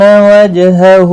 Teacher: جیم ساکن پر قلقلہ ہوگا، ہا کے اوپر الٹا پیش ہے، ایک الف کی مقدار کے برابر کھینچ کر پڑھیں گے۔